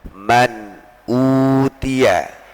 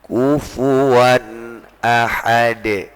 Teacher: Jelas ataupun terang di sini, maka tidak boleh ada dengung, tidak boleh ada idgham, tidak boleh ada penyamaran. Jadi memang benar-benar jelas, dibaca terang begitu. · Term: dibaca jelas atau terang